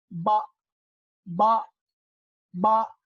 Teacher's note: इसका मखरज कुछ इस तरह है कि दोनों होंठ के गीला हिस्सा जो है उसके मिलने से अदा होगा बा।